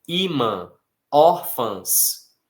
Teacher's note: A força aí, diferentemente do que acontece com irmã e maçã, está na penúltima e não na última, por isso elas são acentuadas. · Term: paroxítonas